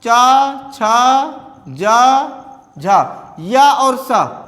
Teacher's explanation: इनका उच्चारण स्थान क्या है? तालु है। तालु अर्थात तालव्य है।